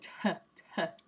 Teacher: if I said a T that's aspirated, it'd be like tuh.